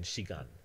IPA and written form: ʃigan (shigan)